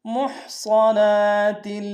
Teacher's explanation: ہا کو گہرائی سے ادا کریں گے، صاد کو موٹا ادا کریں گے ، نون کے اوپر کھڑا زبر ایک میں کھینچیں گے، تا